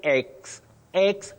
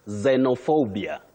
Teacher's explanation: No, you just start with a sound Z. The X in this word takes what we call the voiced sound Z.